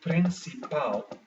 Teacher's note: it is found at the end of this word so therefore the last syllable pal gives the stress instead of the second last one